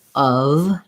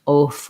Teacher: make sure you're using a schwa and a v sound so of not off or off um the vowel the spelling